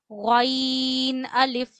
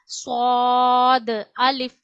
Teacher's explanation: गइन को हमेशा मोटा पढ़ा जाता है और गले के पहले हिस्से से पढ़ा जाता है।